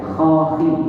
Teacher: Keluar dari tenggorokan bagian atas.